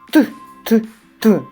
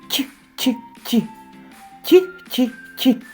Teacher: молоточок вимовляв твердо т т т а годинник вимовляв м'яко